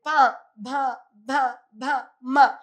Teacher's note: പ, ഭ, ഭ, ഭ, മ എന്ന് പറയുമ്പോൾ നമ്മൾ നമ്മുടെ ചുണ്ടുകളാണ് ഉപയോഗിക്കുന്നത്. അതുകൊണ്ട് തന്നെ പാ വർഗത്തിൽപ്പെട്ട എല്ലാത്തിനെയും നമ്മൾ എന്ത് പറയും? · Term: ഓഷ്ട്യസ്വരങ്ങൾ